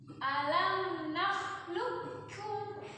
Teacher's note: Kalau itu itu huruf pertamanya lebur. Jangan dibaca qafnya, langsung ke kaf. Kafnya pakai tasydid. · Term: idgham mutaqarribain